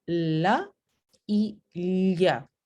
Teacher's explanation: Para estas dos consonantes tenemos obstrucción al centro de la boca y salida libre del aire a los dos lados. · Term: laterales